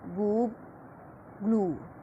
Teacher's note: long high back rounded